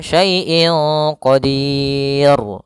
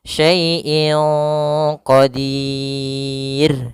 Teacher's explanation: Tapi dia tipis ra-nya. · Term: ra tarqiq